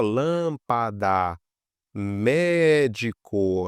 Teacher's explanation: A gente vê que a antepenúltima que é a mais forte, então vai acento por ser uma proparoxítona.